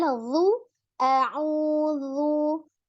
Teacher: ketika dhammah, majukan kedua bibirnya